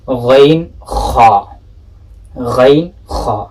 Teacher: Sounds of these 2 letters are produced from this articulation point, from adnal halq.